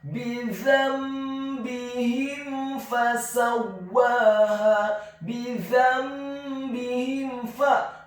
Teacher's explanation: Huruf mim yang sukun bertemu dengan huruf fa, hukum bacaannya adalah izhar syafawi, dibaca dengan jelas.